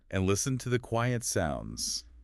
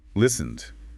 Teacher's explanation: ends in N which is voiced so it gets the D sound